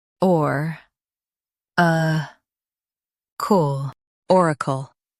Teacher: Stress or and keep kul light.